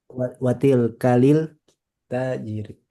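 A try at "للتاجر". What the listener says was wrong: Nah, ini alif lam syamsiah ingat. Jadi bukan lil tapi lit. Langsung ke taknya.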